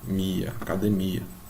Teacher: academia demora mais na última aqui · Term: sílaba tônica